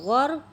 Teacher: را جو ہے ساکن ہے، اس کے پیچھے والی حرف پر زبر ہے تو اس لیے اس کو پر کر کے پڑھیں گے. اگر زیر ہوتی تو یہ باریک پڑھی جاتی.